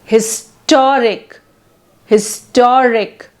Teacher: Adjective ending in IC suffix like syllabic, like autocratic, historic, etc. So the stress is on penultimate syllable. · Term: primary stress